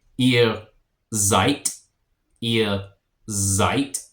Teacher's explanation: a S makes a Z sound at the beginning